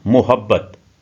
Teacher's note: بحر متقارب کا ہر رکن 5 حرفی ہے، یعنی ہر 5 حرفی لفظ متقارب کے ایک رکن کے وزن کے برابر ہے، جیسا کہ لفظ محبت۔ محبت کا بے تشدید کی وجہ سے دوہرا کر پڑھا جاتا ہے، جو 2 حروف کے برابر ہے۔